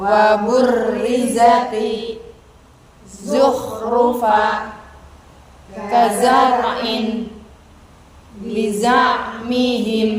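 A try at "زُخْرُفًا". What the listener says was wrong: Ya, baik ya, betul saya.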